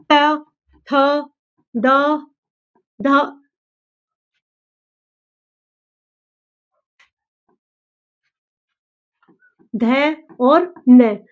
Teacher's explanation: त वर्ग है, इसको हम बोलेंगे किससे? दांत से।